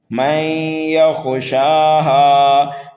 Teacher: خا کو پر کر کے پڑھا جائے گا، شین اور ہا کو ایک الف کے برابر کھینچا جائے گا۔